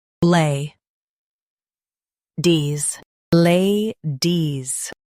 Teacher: Emphasize lay and keep dees light.